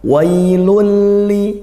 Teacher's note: tanwin bertemu lam hukumnya idgham bila ghunah idgham dibaca masuk · Ya, di ayat yang pertama, wailul li, ya ada wai, di situ ada fathah diikuti ya sukun. Ini namanya lin ya, lin dibaca lembut gitu, tapi tidak ada hukum panjang